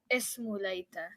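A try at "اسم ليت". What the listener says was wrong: excellent. Ismu layta.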